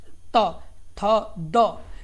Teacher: दंतय में क्या होगा कि आपकी जीभ दांतों से टच करेगी यानी दांतों से टकराएगी।